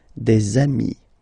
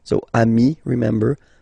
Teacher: Okay, and so you've got des ami, okay? And if you make the liaison, so the link between the two, you will get des amis